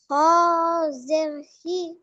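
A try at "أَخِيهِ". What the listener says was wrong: জের শুধু আছে না, খ ইয়াজের খি, মিন আখি। হাজের হি। মিন আখিহি, কি ব্যাপার, ভুলে যাচ্ছ? মিন আখিহি।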